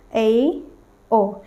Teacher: आधा मुंह बंद रहता है और थोड़ा थोड़ा सा क्या होता है खुलता है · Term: अर्ध संवृत